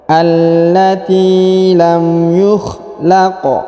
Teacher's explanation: Huruf qaf berharokat sukun maka kita pantulkan ya